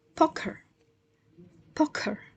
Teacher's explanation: is aspirated because is in initial stress position also followed by a vowel